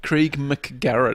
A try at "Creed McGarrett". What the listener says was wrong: Krieg now. You're throwing a G on the end. Krieg.